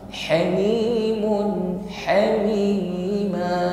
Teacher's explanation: huruf ha hamas cirinya ada nafas, ya.